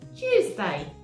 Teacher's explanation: It's chew. So the T sounds a bit like a ch at the beginning of the word